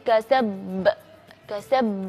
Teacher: merapatkan bibir tapi ee ditahan agak lama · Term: Qalqalah kubra